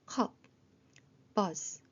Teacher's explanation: 아 소리를 할 입모양의 어라고 짧게 중앙에서 소리 내는 것